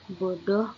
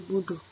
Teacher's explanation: Pengucapan bunyi o dibaca dhammah u. Contoh, bodoh menjadi buduh.